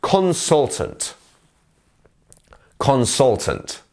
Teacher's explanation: as you can see here, our stressed syllable is the sol bit.